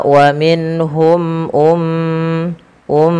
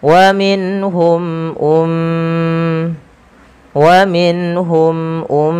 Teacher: tahan suara m ya karena ia mim berharakat tasdid dan kita hukumi dengan bacaan gunah